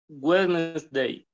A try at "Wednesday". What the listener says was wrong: Okay, here you only say Wednesday. You have only two sounds, no three sounds, no Wednesday. You only say Wednesday.